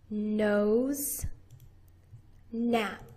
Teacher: you're pushing all of the air through your nose. The sound is going through your nose. Nose, nap. You put your lips together and you push out with a brief little explosion of air.